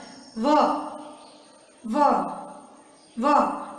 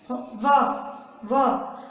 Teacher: आप व बोलोगे, आपका नीचे वाला होठ है ऊपर वाले दांत से टकराएगा, व। आप व बोलोगे, कभी ऐसा गौर किया है बच्चों? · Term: दंतोष्टम